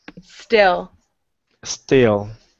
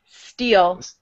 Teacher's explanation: Yeah, it's an eh, not an e.